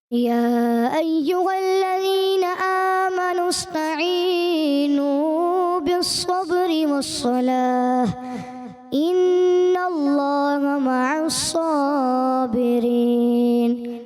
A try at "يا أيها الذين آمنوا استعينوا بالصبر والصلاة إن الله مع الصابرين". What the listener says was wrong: استعینوا میں یا مدہ کچھ زیادہ ہوا. استعینوا تو 10 میں سے 9 نمبرز.